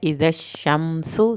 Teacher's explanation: सीन को सीटी की आवाज़ के साथ पढ़ना है